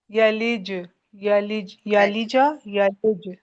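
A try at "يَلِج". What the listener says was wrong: آپ کی زبان کا درمیان فرنٹ تالو کی طرف آ رہا ہے رگڑ کھا کے، جیسے یلج یوں، یلج یوں ہو رہا ہے، یلج یلج.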